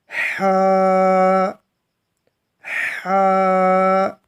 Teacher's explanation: ہم نے اپنے حلق کا جو درمیانی حصہ ہے، جہاں پر آپ کے گلے کی ہڈی ہے، وہاں سے آپ نے اس کو ادا کرنا ہے۔ ہا ہا۔ اور آپ ایسے کیجئے گا کہ اپنی فنگر کو اس ہڈی کو اوپر رکھیے گا اور پھر ادا کیجئے گا کہ کیا آپ کی آواز وہاں سے ادا ہو رہی ہے۔